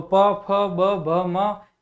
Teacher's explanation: फिर आप ओष्ठ्य में प वर्ग देख सकते हैं, तो प, फ, ब, भ, म ये ओष्ठ्य में ओष्ठों में स्पर्श के कारण उच्चारित होते हैं।